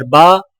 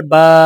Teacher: بڑا زبر ہونٹوں کو اوپر کی طرف کھول کر بغیر کھینچے اور جھٹکا دیے پڑھیں۔ کھڑا زبر ہونٹوں کو اوپر کی طرف کھول کر تھوڑا سا کھینچ کر پڑھیں۔ با زبر با، با کھڑا زبر با۔ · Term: بڑا زبر اور کھڑا زبر